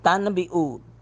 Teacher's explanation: نون ساکن کے بعد با ہے، نون ساکن کو میم سے بدل کر تم بنا دیا